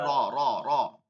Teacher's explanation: আরবির মধ্যে কোনো ভাইব্রেশন র নাই, অনেকেই এটা ভুল করি।